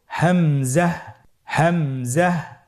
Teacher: হামজা হরফটি উচ্চারণের স্থান হায়ের মতোই। হা হরফটি যেখান থেকে আমরা উচ্চারণ করেছি একই জায়গা থেকে আমরা হামজা হরফটি উচ্চারণ করব হলকের শুরু হতে। · হামজা হরফটি উচ্চারণ ক্ষেত্রে বারিক করে উচ্চারণ করতে হবে এবং এখানে টেনে পড়া যাবে না, দ্রুত পড়তে হবে।